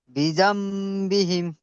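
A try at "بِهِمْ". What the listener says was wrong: মাশাআল্লাহ, খুব সুন্দর পড়েছেন, এইরকমই তো পড়বেন।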